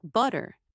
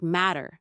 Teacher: Instead, we use what's called a flap t, which sounds almost like a very quick d sound.